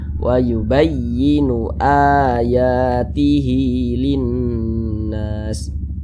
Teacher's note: Jadi karena ini ada huruf hamzah yang dibaca panjang, ya, huruf hamzah yang dibaca panjang, maka ini namanya adalah mad badal. Mad badal itu panjangnya 2 harokat.